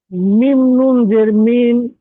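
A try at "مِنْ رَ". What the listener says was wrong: না, এই এই নুন সাকিনটা পড়া হবে না, এই মিমটা গিয়ে এই রয়ের সঙ্গে পড়তে হবে। এই নুন সাকিনের কায়দা হচ্ছে তারা, নুন সাকিনের পরে যদি র আসে তাহলে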